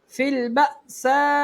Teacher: حمزہ ساکن جھٹکا دے کے پڑھیں گے